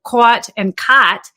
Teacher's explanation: If I'm from the West Coast, I'll say something like the word COT and the word CAUGHT. I pronounce them the same way